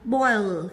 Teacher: khi đọc âm l thì cổ của mình nó sẽ rung, người ta gọi là âm hữu thanh